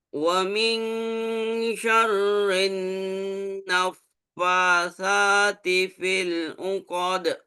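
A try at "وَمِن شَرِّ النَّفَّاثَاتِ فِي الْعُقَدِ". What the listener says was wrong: Lagi jangan syarrin. I-nya jelasin.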